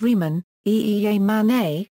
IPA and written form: ˈʁiːman (Riemann)